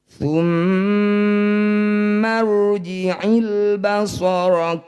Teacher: Di sini ada ro sukun didahului fathah disebut bacaan ro tafkhim. Bunyi ro baca tebal, angkat ujung lidah sampai menempel di langit-langit lisan.